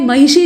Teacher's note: लेकिन भाई महिषी जो लिखा हुआ है इसका शुद्ध उच्चारण अगर आप करना चाहते हैं तो आपको मूर्धन्य श बोलने के लिए अपनी जबान को अपनी मूर्धा में ले जाकर ट्विस्ट करना पड़ेगा, मोड़ना पड़ेगा